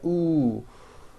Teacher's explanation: Again, and notice how my jaw is opening on each one. And also notice how my lips are coming forward all the way on the ooh sound.